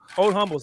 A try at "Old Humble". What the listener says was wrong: No, you don't pronounce the H. Okay, no H.